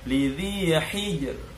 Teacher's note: Jangan lupa getarannya ro tetap ada.